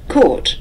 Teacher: an Americanization tendency, especially from the West Coast around California, to say ah for aw.